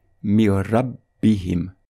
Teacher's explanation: on va appliquer la règle de l'assimilation sans nasillement et on lira mir rabbihim.